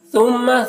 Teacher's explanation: ثا کو باریک پڑھیں گے، میم مشدد ہے، میم میں غنہ کریں گے